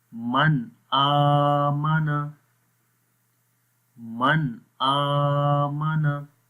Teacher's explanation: نہیں کرنا، غنہ نہیں کرنا، ٹھیک ہے، تو ظاہر کرنا ہے، ظاہر میں کوئی غنہ نہیں ہوتا، کوئی لمبا نہیں کرنا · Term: اظہار